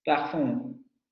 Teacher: Es semiabierta, anterior, labializada y con un diacrítico de nasalizada. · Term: anterior semiabierto labializado, nasal